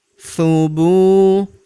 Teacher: Huruf Bu kita panjangkan 2 harokat karena terdapat waw sukun di depannya.